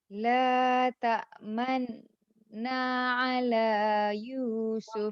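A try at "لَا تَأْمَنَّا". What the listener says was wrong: Kalau berhenti manna tak jadi. Dia kena ada baris dhammah tapi sedikit. Cuping telinga halus. Tipis bunyi dia. La ta'manuna.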